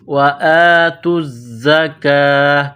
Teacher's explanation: زا میں سختی کرنی ہے، سیٹی کی آواز پیدا کرنا ہے